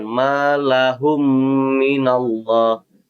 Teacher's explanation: ada mim mati bertemgu dengan mim hukumnya idgham mutamasilain cara bacanya mim pertama diidamkan ke dalam mim kedua dengan gunah yang dipanjangkan dua harakat atau dua ketukan